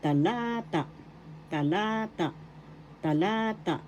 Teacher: First syllable ta, second syllable la, third syllable ta. Second syllable is where the accent is, so that's how you will pronounce talata, talata, talata.